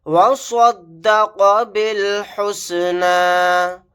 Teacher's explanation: صاد کو موٹا یعنی پر پڑھیں گے، قاف کو بھی موٹا یعنی پر پڑھیں گے، با کو ڈائریکٹ لام کے ساتھ ملائیں گے، جو با کے ساتھ الف ہے نہیں پڑھا جائے گا، لاسٹ میں یا بھی نہیں پڑھا جائے گا۔